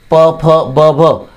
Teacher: उच्चार करताना आपल्या दोन्ही ओठांचा एकमेकांशी स्पर्श होतो आणि म्हणून त्यांना ओष्ठ्य वर्ण असं म्हणतात